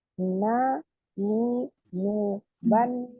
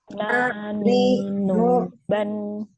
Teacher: Kalau nun adalah keluarnya dari ujung lidah mengenai gusi gigi seri pertama yang atas. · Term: huruf nun